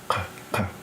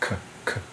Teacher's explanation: That's a voiceless uvular stop, as opposed to a voiceless velar stop, which is like the sound C makes in cup in English. So like k, k, versus which is that uvular stop.